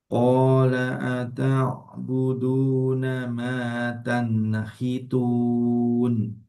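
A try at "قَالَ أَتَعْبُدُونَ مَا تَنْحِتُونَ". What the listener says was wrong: Nah, ini nonnya sedikit mantul. Tanhitun. Coba. Tanhitun.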